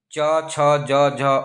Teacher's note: स्पर्शी संघर्षी व्यंजन च वर्ग कहलाता था